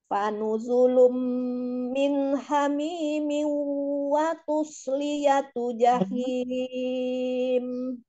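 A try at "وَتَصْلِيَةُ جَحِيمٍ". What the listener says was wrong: Bukan watus, watash.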